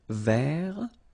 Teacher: So masculine form, don't pronounce the final T.